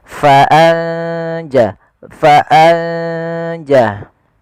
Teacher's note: Tapi bacaan ikhfa yaitu kita samarkan ke huruf setelahnya. Kalau di sini huruf jim maka nunnya samarkan ke huruf jin.